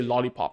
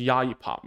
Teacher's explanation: Okay, a very good example would be if a child cannot do the L sound, like L, that L, they say lollipop, it becomes yayipop, right? So the L becomes a Y.